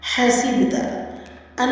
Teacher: نون مشدد کا غنہ ہے، یہاں پہ یہ فرسٹ لیول آف غنہ ہے، اس کو آپ نے، اس کو طویل ترین غنہ بھی کہتے ہیں، تو آپ نے طویل غنہ کے ساتھ پڑھنا ہے۔